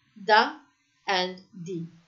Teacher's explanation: what happens in a word like the is that the sound becomes a d, and the schwa becomes an a sound. So da and di, depending on whether it's a the or the article.